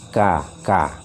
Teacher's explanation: Sama seperti ka biasa huruf Indonesia, tapi bedanya kalau ka Indonesia kan kakak, kakak, kakak. Kalau Arab kakak, ka ada suara anginnya sedikit, ka, ka. Jangan kebanyakan, ka, ka.